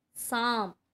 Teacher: कहाँ से आवाज़, नाक और मुंह दोनों से ही आ रही है, तो यहाँ पर चंद्र बिंदु लगेगा यानी कि अनुनासिक।